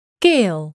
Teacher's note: In a word like gale, the transition from saying the A to forming the L in the back of the mouth causes a very slight gliding in the sound toward an I sound, gale. This is a glide that your tongue is going to do automatically, and therefore it's not reflected in the IPA.